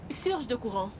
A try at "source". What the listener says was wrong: Ce n'est pas surge, c'est source. Prononce bien. Vas-y, source de courant.